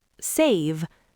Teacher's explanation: Save ends in a voiced V. The vowel is stretched.